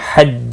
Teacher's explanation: फिर लम साकिन को हिलाना नहीं। हज्ज, जीम साकिन पर क़लक़ला होगा वक़फ़ की सूरत में।